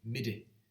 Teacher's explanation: In the middle of the word, there are two different pronunciations. There's a palatalized tap.